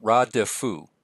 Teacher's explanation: it's a long A, and then the vocal schwa